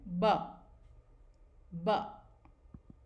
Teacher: b sound is voiced and stop sound। तो इस तरह से जब दोनों होठों को बिल्कुल स्मूथली नज़दीक लाते हैं, ना वो लिप्स अंदर की तरफ जाते हैं ना ही वो बाहर की तरफ आते हैं, और इस बीच में जो साउंड आती है वो होती है ब।